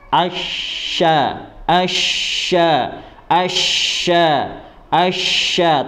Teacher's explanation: Didengungkan terlebih dahulu, baru sambil diarahkan ke huruf sya. Sya, huruf sya bagaimana makhrajnya adalah tengah lidah dinaikkan ke langit-langit